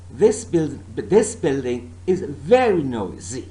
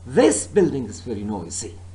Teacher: I'm not stressing the word this, nor building, nor is, and nor noisy, but my stress is on the word very.